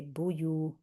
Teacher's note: Bu short, yu long. Otherwise, we're adding a wow there.